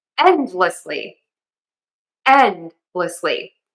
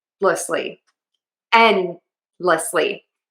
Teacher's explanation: So, I say end and then I have a slight D. It's unreleased.